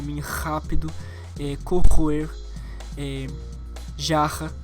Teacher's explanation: ele é um R com som mais raspado